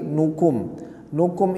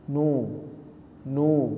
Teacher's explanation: nukum itu dah Jangan dibaca O ya tapi u